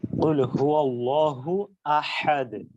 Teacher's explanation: আল্লাহ শব্দের যে হা টা সেটা হচ্ছে ছোট হা যেটা হলকের শুরু থেকে উচ্চারিত হচ্ছে